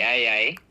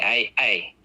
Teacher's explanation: You see how the throat stops the air, and then when the vowel starts, it's a bit louder when it starts, when the air starts getting let through. That's what a glottal stop does.